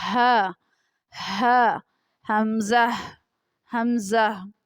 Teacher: حلق کا وہ حصہ جو سینے کی طرف ہے، اس سے حمزہ اور ہا ادا ہوتے ہیں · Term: اقصائے حلق